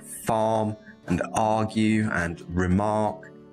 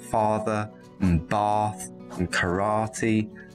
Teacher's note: This is a long vowel sound. Technically, it's called the open back unrounded vowel. So we make this sound by opening our mouths, dropping the jaw down a little bit, and keeping the back of the tongue down.